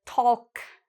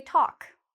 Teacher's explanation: We don't pronounce the L. So we say talk.